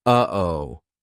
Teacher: We aren't making the same mouth formation like we do for the true T, or even the held T. It's coming from our throat. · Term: glottal stop